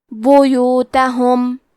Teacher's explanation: کلمت بیوتہم میں با پہ اور یا پہ پیش ہے تو ہم یہ دونوں پیش کو برابر سے ادا کریں گے